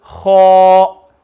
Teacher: So in the example, kha fatha, and there's the alif, then you're going to read kha. So not only is the kha full mouth, the alif after will also be full mouth.